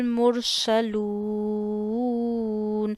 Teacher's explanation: مر میں را کو موٹا کرنا ہے کیونکہ قاعدہ یہ ہوتا ہے را پہ خود زبریہ پیش آ جائے یا را ساکن سے پہلے زبریہ پیش ہو تو را کو موٹا کرتے ہیں.